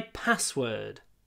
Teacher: password is a compound noun it's one word made from two nouns so the stress is always on the first word